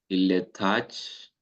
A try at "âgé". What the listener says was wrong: Âgé. If you say âge, so âge is a word that exists in French, but that's the age. Un âge, that's the noun, l'âge. Âgé is the adjective. Il est âgé.